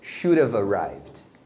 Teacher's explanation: geralmente o som do V vai ser mantido porque aí você consegue emendar com o arrive, né? Porque a palavra começa com vogal, então geralmente eles vão fazer isso.